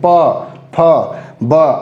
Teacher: लिप को आपस में टच करके बोलते हैं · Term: ओष्ठ